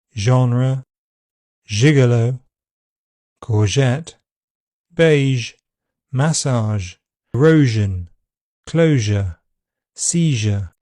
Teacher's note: It's made by positioning the tongue close to the roof of the mouth behind the alvola ridge and squeezing air past it. The lips can be rounded as the sound is produced. The voice box vibrates throughout.